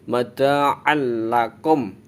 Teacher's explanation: Mada'al. Nah, jadi suara tanwinnya itu hilang, masuk ke huruf lam. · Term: idgham bila gunah